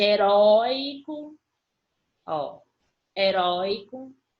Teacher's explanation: ditongo são duas vogais, que na verdade é uma vogal e uma semivogal, com som aberto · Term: ditongo aberto